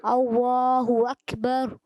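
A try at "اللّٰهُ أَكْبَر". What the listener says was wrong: اکبر میں را کو پر کرنا ہے، اللہ اکبر،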